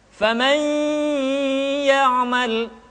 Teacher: Ditahan, tidak boleh tergesa-gesa, dan dimasukkan ke hidung. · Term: gunnah